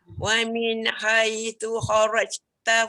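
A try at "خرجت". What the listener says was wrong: Tak bunyi. Tak bunyi tu. Dia bunyi angin. Angin semata-mata. Memang dia tak ada bunyi lantunan tadi. Wa min haitsu kharajta. Kharaja je. Dia tak bunyi suara lantun. Je. Cuba ajar sebut je. Dia kena macam tu. Dia tak boleh dia tak boleh angin. Kharajta dia suara, dia bukan angin.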